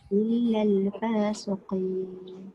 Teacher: Dia tak boleh lama sebab lam itu bukan huruf gunnah. Lam itu huruf lidah kan? Dia bukan huruf hidung.